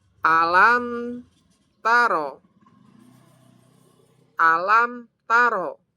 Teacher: mim sukun bertemu ta. Idhar syafawi. Jadi harus jelas